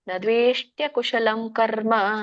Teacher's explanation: ಕರ್ಮ ಎಳಿಯಂಗಿಲ್ಲ ದೀರ್ಘ ಇದ್ದಾಗ ಮಾತ್ರ ಎಳಿತೇವೆ